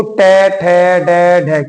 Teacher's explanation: दांतों से पीछे का जो स्थान होता है उससे जीभ टकराती है, उसको मूर्धा बोलते हैं, तो उच्चारण स्थान हो जाएगा मूर्धन्य, तो ट वर्ग का हो जाएगा।